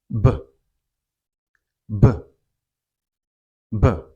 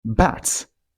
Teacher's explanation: This is a voiced consonant and it's pronounced b, b, b.